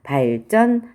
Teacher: 한자어 받침 리을 뒤에 따라오는 예사소리가 된소리가 됐어요.